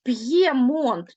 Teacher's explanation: Ми чуємо чітко роздільну вимову звук п твердий звук є позначає два звуки